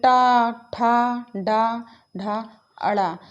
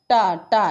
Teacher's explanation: हमारी जीभ जो है वो क्या हो रही है, बोलते समय मुड़ जा रही है, तो इसका उच्चारण मूर्धा है। ये जीभ के मुड़ने से हो रही है।